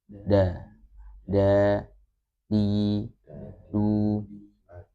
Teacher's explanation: Jadi yang paling pas adalah ketika dia mengucapkan huruf dal itu menyentuh ya ujung lidah, menyentuh langit-langit atas ya sebentar.